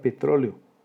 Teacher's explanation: hiato entre la vocal abierta E y la vocal abierta también O. La sílaba tónica es la penúltima, es una palabra esdrújula y por eso tiene tilde.